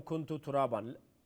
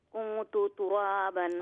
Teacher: hide the nun sound. It will be light nasal sound. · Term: ikhfa